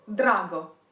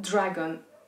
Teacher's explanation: Drago, not dragon. In the English word dragon, the tongue is actually moving backwards.